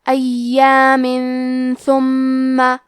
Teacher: کلمت ایامن کے آخری میں میم کے نیچے تنوین زیر ہے، پھر حرف الثاء آتا ہے کلمت ثم۔ ثاء حروف الاخفاء میں سے ہے تو ہم یہ حکم کو غنہ کے ساتھ ادا کریں گے۔ ایام ثم۔ کلمت ثم میں ثاء کی ادائیگی زبان کے سر اور اوپر کے دانتوں کے اندرونی کناروں سے ہے۔ · کلمت ثم میں ثاء کی ادائیگی زبان کے سر اور اوپر کے دانتوں کے اندرونی کناروں سے ہے۔ میم پہ تشدید ہے تو ہم 2 حرف کے برابر میم کو پڑھیں گے۔